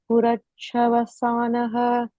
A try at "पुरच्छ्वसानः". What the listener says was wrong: Chwa is one word, one letter. So, Purachwasanah.